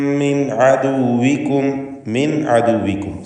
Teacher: ഖദ് അൻജയ്നാകും മിൻ അദുവികും, മിൻ അദുവികും സാക്കിനത്തായ നൂനും ശേഷം ഐനും വരുന്നു. നൂനിനെ ഇൽഹാർ ഹൽക്കി നൽകി മണിക്കാതെ വെളിവാക്കണം.